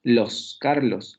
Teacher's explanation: O en Carlos, las dos sílabas terminan en consonante. La primera va a terminar alveolar vibrante simple y la segunda va a terminar en la alveolar fricativa sorda. Los, Carlos, y por tanto tenemos también sílaba trabada, ¿vale?